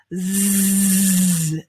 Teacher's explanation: done clothes [Music] and then i'm adding a z sound z the z sound is exactly the same as the s sound but i'm just adding my voice